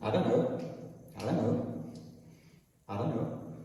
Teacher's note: you just drop the tea all together you get rid of it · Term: drop tea